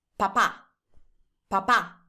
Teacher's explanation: Whenever you have a word that has the accent on the last vowel, that means that you have to stay a little bit longer on that vowel. · Can you hear that I'm staying a little bit longer in the second A? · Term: accent mark